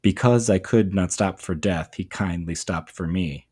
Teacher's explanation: So it's a unstressed and then a stressed syllable. And so if I were to read it, I don't think this is the way to read it, but if I were to read it to um emphasize that metric structure, it would sound something like this. · iambs, so it's a unstressed and then a stressed syllable